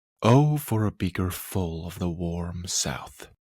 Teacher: Of and the make up a pyrrhic, a foot with no stresses, and warm south is a spondee, a beat of 2 stresses. Together, the pyrrhic and the spondee make up what is called a double iamb, 2 unstressed beats followed by 2 stressed beats. · The is in the position of the strong beat, but it's clearly a weak stressed syllable, so you glide over it.